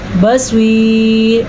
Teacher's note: صواد کو پر پڑھنا ہے کیونکہ صواد حروف مستعلیہ میں سے ہے. اگر ہم یہاں پہ وقف کریں گے تو را باریک پڑھی جائے گی، اگر ہم وقف نہیں کریں گے تو را پر پڑھی جائے گی.